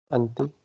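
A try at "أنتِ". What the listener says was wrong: Anti. Very good.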